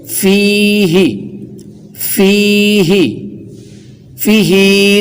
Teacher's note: یا مدہ ہو گئی تو ایک الف تک کھینچ کے پڑھیں گے۔ فیہ، فیہ، فیہ نہ کہا جائے کہ ہا ہم نے زیر کے سبب بالکل لمبی نہیں کرنی، اور فا کے نیچے اگرچہ زیر ہے لیکن یا مدہ ملنے سے ایک الف تک بڑھ جائے گی۔